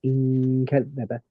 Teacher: we keep the gunna and we omit the tongue component. So it goes in kadhaba. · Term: ikhfa